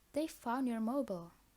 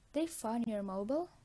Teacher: we can retain the declarative syntactic structure and still ask the question by placing a rising, rather than a falling, tone on the LLI, like, they found your mobile?